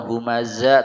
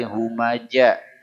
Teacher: Zai nah ini kembali kepada masalah kebiasaan orang-orang di sini yang mengganti huruf Zai kepada huruf Jim